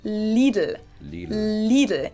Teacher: both of the L sounds are light L's that you pronounce with the top of your tongue